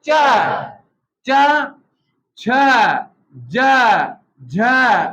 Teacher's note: तालु के ऊपर जा रही है ना जीभ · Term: तालव्य